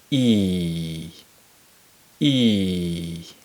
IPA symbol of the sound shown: i: